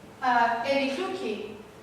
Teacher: Evifluki, U is under stress. Evifluki, and everything after U is devoiced on the record. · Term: devoicing after stress